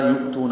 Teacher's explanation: حمزہ ساکن جھٹکے سے ادا ہوتا ہے